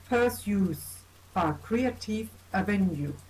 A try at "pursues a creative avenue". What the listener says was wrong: Okay, not pursues. It's not per as in like per person. Okay, when it's per person, it's like, you know, if you're dividing something and there's one piece per person, there you get that stress on the per. This is just pursuit or pursues.